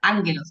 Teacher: la gama que se pronuncia como una N cuando está antes de otra gama, antes de una capa